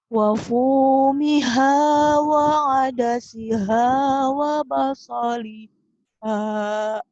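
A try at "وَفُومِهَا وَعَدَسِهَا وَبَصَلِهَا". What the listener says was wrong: napasnya nggak cukup, dilatih. Wa fumiha wa adasiha wa basaliha. Harus cukup ya, nanti lama-lama bisa cukup sampai.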